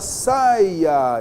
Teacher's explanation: na palavra saia eu tenho vogal + semivogal e depois eu tenho uma vogal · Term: ditongo decrescente